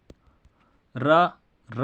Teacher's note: र बोलते वक्त आपका जीभ का भाग क्या होता है, थोड़ा सा लुढ़कता है र बोलते वक्त, इस कारण से कहलाता है लुंठित स्वर।